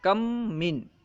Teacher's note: مین میں بھی پہلا حرف میم ہے، تو پہلا میم یعنی کم میں جو میم ہے یہ ساکن ہے، اس کے بعد ایک متحرک میم آیا، اسی وجہ سے پہلے میم کو دوسرے میم میں ملا کر ایک مشدد حرف بنا دیا گیا، کم من۔ ٹھیک ہے، اب پہلے میم کو نہیں پڑھ رہے ہیں بلکہ دوسرا میم مشدد ہے، بس اسی کو پڑھ رہے ہیں۔ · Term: ادغام شفوی مع الغنہ